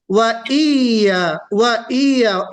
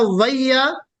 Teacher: पहले हमजा है, हमजा को या मुशद्दद में मिलाएंगे, या की जो तशदीद है उसमें हम मिलाएंगे। वईया, वईया एक होता वैया, एक होता वईया, तो वैया नहीं कहना है हमको, वईया।